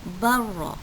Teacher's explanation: Dan mesti ingat ya, idgham mutaqaribain kita mesti memasukkan huruf pertama ke dalam huruf yang kedua. Jadi kita tak perlu sebut huruf lam itu, ya, hanya terus sebut huruf ra